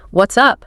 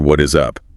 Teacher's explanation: The t kind of vanishes and the links right over. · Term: connected speech